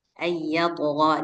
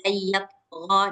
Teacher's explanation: Dia karena qalqalah sughra, jadi nggak apa-apa kalau suaranya kecil. Asal Ah, kedengaran dia qalqalahnya.